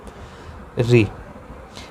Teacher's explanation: री। री ये मुंह के भीतर की छत के अगले भाग से बोला जाता है